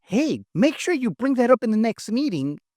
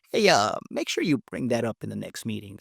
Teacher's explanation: Notice how I use that breathy, creaky voice to sound like a leader.